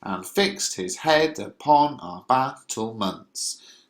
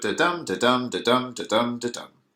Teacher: So the way you would read this is, "and fixed his head upon our battlements." And you can see the kind of energy, the stress is the technical term, but the kind of power, the emphasis is on every other syllable. "And fixed his head upon our battlements." So this gives a sort of sing-song quality to the lines, really. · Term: iambic pentameter